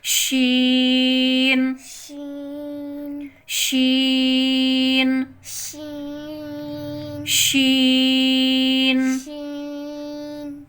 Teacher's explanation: जुबान के दरमियान वाले हिस्से को बिल मुकाबिल ऊपर तालू से लगाकर अदा होता है